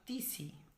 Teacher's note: মূল শব্দ হচ্ছে অতসী, শুরুর অটা দেখো লোপ পেয়ে গেছে। তাহলে এটা আদি স্বরলোপের দৃষ্টান্ত।